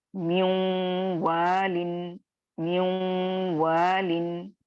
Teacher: نون کی آواز آ رہی ہے، غننے کی آواز آ رہی ہے، اس کو آپ ادغام ناقص کہیں گے یعنی انکمپلیٹ مرجنگ